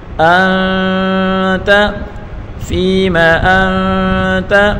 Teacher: فیما انت، حمزہ کو نون کے ساتھ ملا کر پڑھیں گے اور نون ساکن ہے، نون ساکن کے بعد اخفا کا حرف تا ہے تو یہاں گنہ کر کے پڑھیں گے